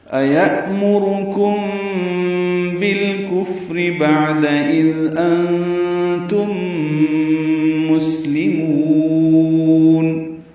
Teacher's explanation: أَيَأْمُرُكُمْ بِالْكُفْرِ بَعْدَ إِذْ أَنْتُمْ مُسْلِمُونَ حمزہ یا کی شکل میں جلدی ادا ہوگا. یأمرکم میں حمزہ ساکن جھٹکے سے ادا کیا جائے گا. را پر پڑھیں گے، کاف باریک ہے، میم ساکن کے بعد با آنے کی وجہ سے اخفاء شفوی ہے.